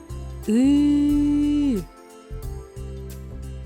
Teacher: при вимові звука и ротик відкритий широко кінчик язика трохи відтягнутий від нижніх зубів повітря проходить вільно додаємо голос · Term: звук и